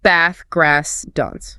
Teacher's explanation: RP speakers use a deep long a sound produced much further back in the throat. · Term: flat elongated a sound, flat, elongated A sound